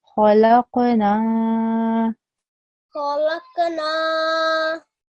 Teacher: Yeah, just the ha, I've said before as well, is a round and thick letter. So it shouldn't be a kha, it should be thicker and rounder in pronunciation.